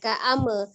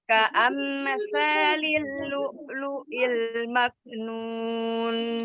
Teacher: Jadi sempurnakan mim sukunnya itu dengan merapatkan 2 bibir ya. Jadi jangan pas mengucapkan ya, supaya tidak memantul.